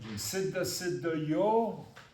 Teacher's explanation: Visarga follows, and you repeat that vowel with a half breath.